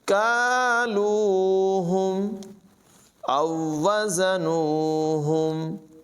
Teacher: اور یہ جو ڈنڈی والا کاف ہے اس کی اواز باریک ہے